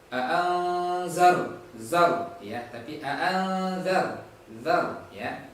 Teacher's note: kita perhatikan di sini juga huruf ro, usahakan tidak ada pantulan ya. A'anzar, zar ya, tapi a'anzar, zar ya, jangan sampai ada pantulan.